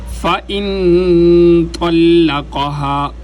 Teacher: قاف موٹا قاف اوپر والے تالو کے نرم حصے پر جب اپنی زبان کے پشت کو لگائیں گے تو یہ قاف موٹا ادا ہوگا۔